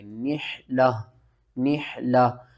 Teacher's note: اگر ہم نے گول تا کے اوپر وقف کرنا ہے تو ہم تا کو ختم کریں گے، اوپر جو بھی حرکت ہوگی اس کو ہی ختم کر دیں گے، چاہے وہ دو زبر ہو، دو زیر، دو پیش ہو۔